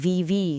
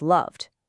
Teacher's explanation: Love ends in that buzzy vv sound